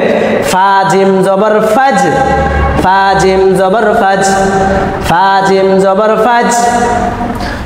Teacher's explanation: জিম কিন্তু কলকলা হরফ, প্রতিধ্বনি দিয়ে পড়তে, প্রতিধ্বনি একটু শক্ত আওয়াজ দিয়ে পড়তে হবে